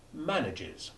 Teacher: the e formerly silent becomes short e3 sounding exactly like the preceding short a4